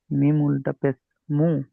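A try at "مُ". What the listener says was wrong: এগুলো যেন ওই শুধু পেশের মতন পড়লে হবে না, এগুলো উল্টা পেশ, একালিপ্ত করে টান দিতে হবে, একটু টান দিয়ে পড়বেন সবগুলো। মু, এরকম টান দেবেন, একটু ধরে টান দেবেন।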